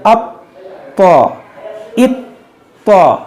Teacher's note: तौ हुरूफ़े क़लक़ला है तो इसको हम खूब जमाव के साथ पढ़ेंगे। अब तो, इत तो, इन जमाव के साथ अदा करेंगे।